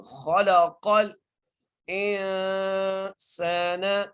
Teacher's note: حمزہ کو نون سے ملائیں گے اور سین کو ایک الف کی مقدار کھینچ کے پڑھیں گے